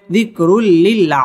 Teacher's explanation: পড়তে হবে। জিকরুল রপুর হবে রুল্লি এটা হচ্ছে ইদগামে বেলা গুন্না তানবিনের বামে লাম আসছে গুন্না ছাড়া পড়তে হবে